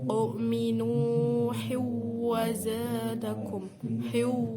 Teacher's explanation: Hiw, di situ ha tanwin bertemu dengan huruf wawu, itu bacaan idgham bihunah, dibaca mendengung